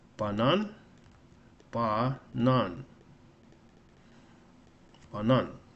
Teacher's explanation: Banan is interesting because you have an a that's stressed and other one unstressed. The stress is on the second syllable.